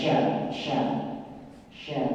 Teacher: sya di tengah lidah dan menyebar nafas di dalamnya